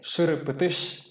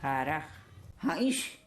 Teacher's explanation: Probablemente la primera cosa que llamará la atención de cualquier persona que conoce otros dialectos del chiquitano en San Miguel es que en el chiquitano migueleño, en vez de la sh, la llamada fricativa retrofleja, que se escribe con una X, se pronuncia una fricativa velar